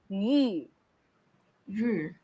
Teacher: It's the long E through a pursed lips.